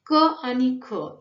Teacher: क आणि ख यांचं उच्चारण कंठ या स्थानावरून होतं, म्हणून कंठ हे उच्चारण स्थान.